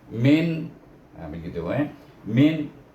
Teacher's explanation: nun sukun bertemu dengan hamzah, kena baca dengan izhar halki. Tidak boleh didengungkan.